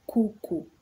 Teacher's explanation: So as explained above, Swahili has 5 vowels, which are A, E, I, O, U. They are pronounced openly without diphthongs, like in Spanish or in Italian. And then they must always be kept short.